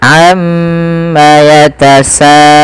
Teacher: Kemudian pada falsa di sini ada mad wajib muttasil, yang dimana kita harus memanjangkan bunyi sa sepanjang 4 atau 5 harokat dan tidak boleh dikurangi, tidak boleh misalkan amma yatasaalun.